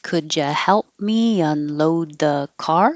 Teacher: It's a yes no question, so it'll go up.